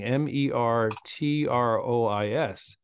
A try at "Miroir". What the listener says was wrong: No T. Meroi's.